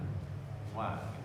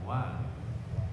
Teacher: Kalau wa ini keluarnya di antara dua bibir, tapi bibirnya tidak bersentuhan. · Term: huruf syafatani